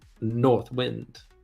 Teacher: Wind by the way doesn't it sound much better if you pronounce that last word North Wind as one word with the accent slightly on the first syllable